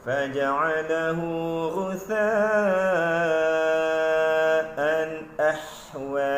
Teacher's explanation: ha pedas itu tidak berbunyi sebagaimana bunyi yang sepatutnya. Dia menjadi ha yang tak pedas.